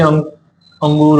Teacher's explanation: अनुनासिक इसमें तुम्हें नाक नाक की जरूरत होगी नाक से भी हवा निकलेगी